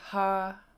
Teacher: H and then High tone double a